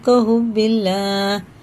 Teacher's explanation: اللہ کا نام زیر سے باریک ہے